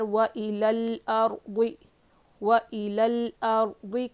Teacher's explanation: را ساکن سے پہلے زبر ہے تو را کو پر پڑھیں گے